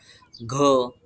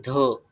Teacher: घ क वर्गातला घ च वर्गातला झ त वर्गामध्ये ध आणि त्या वर्गामध्ये ढ यांचे उच्चार जे ते ह सारखे होतात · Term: चौथा वर्ण